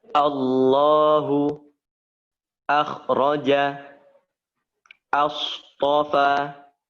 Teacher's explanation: Hanya lam saja yang dibaca tafkhim. Hamzah tidak perlu ditafkhimkan.